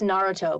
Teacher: It's not Naruto, it's Naruto, because this emphasis is on the first syllable instead of the middle one, which is what we're used to.